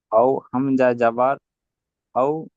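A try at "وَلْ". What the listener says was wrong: ওয়াও লাম জাবার ওয়াল, হামজাটা বাদ। হামজাটা বাদ যাবে, এই হামজাটা পড়া হবে না, ওয়াও লাম জাবার ওয়াল, ঠিক আছে।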